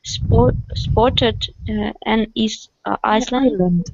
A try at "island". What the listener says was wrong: Island. S is not pronounced. Island.